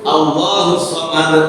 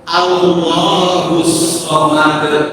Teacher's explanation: Huruf shad itu tidak ditasdidkan padahal harusnya Allahus somad husad. Ya, kalau dalam pelajaran tajwid itu huruf sad itu memiliki sifat rakaatah.